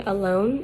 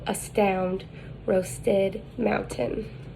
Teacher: the height is mid the advancement is central the lips are unrounded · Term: schwa